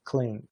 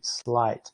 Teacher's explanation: o alofone, que é uma lateral com início desvozeado, o que ela parece ter assimilado do ambiente o desvozeamento.